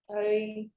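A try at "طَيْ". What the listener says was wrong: You see, you said tai, tai. It was light. Ta. Toi. Toi. So say ta, you press against the roof of your mouth. Okay, behind your teeth. Ta. Press up. Ta. Ta. Toi. To. Toi. Not ta, because we forgot. Remember, it's a wow and yeah. To.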